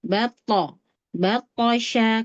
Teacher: Huruf to betul-betul ujung lidahnya nempel di gusi ya. Gusi gigi seri atas.